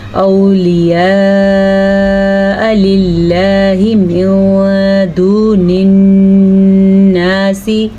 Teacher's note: آپ تقریباً 4 سے 5 سیکنڈ تک اپنا اس مد کو لمبا کر کے ادا کریں